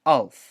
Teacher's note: a glottal stop, a sound that you make by closing off your glottis, and that we make all the time subconsciously, and that's really hard for us to even notice.